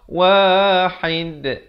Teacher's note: dal bila kita waqaf, kita pepeskan, jangan bulatkan macam qaf. Wahid. Kalau kita bulatkan jadi wahid. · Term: qalqalah kubra